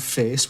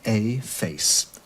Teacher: now that monophthong face which you still get in scotland in places gave way to a diphthong a face